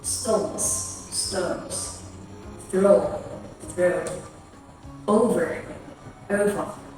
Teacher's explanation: British English pronounces O as O. The diphthong starts at the center of the mouth, while O starts at the back.